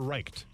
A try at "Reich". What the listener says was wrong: It's Reich with no T. There's no T.